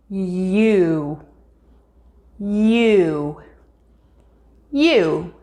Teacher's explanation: touching the top of your mouth after you begin the sound create the u part of the sound by moving your lips into a small circle while lowering the front part of your tongue and raising the back part of your tongue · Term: long u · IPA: /ju/